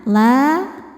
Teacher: Huruf lamnya dipanjangkan dua harakat. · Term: mad thobi'i muqaddar